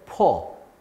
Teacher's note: 그러니까 그 불편함을 해소하기 위해서 하나를 제거하는 이런 원리라고 보시면 됩니다. 그래서 우가 탈락이 되는 것이에요. 그래서 퍼라고 좀 더 쉽고 편하게 발음하는 방식으로 사용되고 있습니다. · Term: 우를 탈락